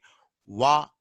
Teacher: That is, the air flows out freely, but at the end there is a moment. Like when you say wa, there is a glide. Lips gets rounded and slowly it goes back. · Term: glides